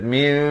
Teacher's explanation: di sini ditukarkan daripada bunyi nun kepada bunyi ba, hukumnya iqlab. Di sini daripada min jadi mim, dua harakat.